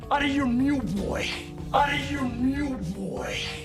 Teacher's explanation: Did you notice how Tuco connects the words out and of as if they were just one word? · As when connected with out, we often remove the F or V sound in of. Also, the T, because it is between two vowel sounds, becomes the American T we heard before. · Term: connected speech